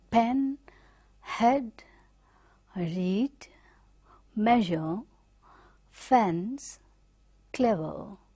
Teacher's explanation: it is in between half close and half open, right? And again front part of the tongue is raising